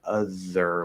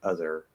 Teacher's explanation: going from th to er because we kind of have to pull all the way back we're most likely just to do a really lazy th that's partially formed · we're most likely just to do a really lazy th that's partially formed. So instead of going all the way up here or up here to make it that dental version, we're actually more likely to go the opposite way.